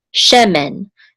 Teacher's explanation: So the accent is on the first syllable, she.